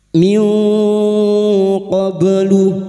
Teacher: nun sukun bertemu kaf ikhfa hakiki, nun sukun dibaca samar dan mendengung selama 3 harokat